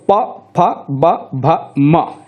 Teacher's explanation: दोनों ओंठों का ही प्रयोग होगा, जीभ का प्रयोग होगा ही नहीं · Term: ओष्ठ